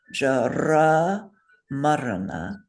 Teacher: So those R's are rolled because they're consonants.